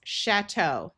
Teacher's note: Ch is going to have the sound of shh because this is a French word.